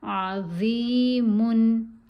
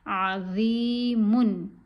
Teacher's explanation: ضا کے نیچے زیر ہے، ساتھ یا ساکن ہے، حرف مدہ ہے، اس کو ہم نے تھوڑا سا کھینچ کے پڑھنا ہے، 1 الف کے برابر۔ عین اور میم کو نہیں کھینچنا۔